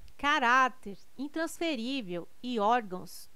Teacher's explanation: caráter intransferível e órgãos tem sua sílaba tônica na penúltima sílaba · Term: paroxítonas